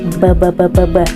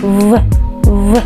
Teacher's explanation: En español, la letra B se produce con los labios, ¿sí? B, b, b, b, b. Pero en ruso, al producir el sonido V, no participa el labio superior.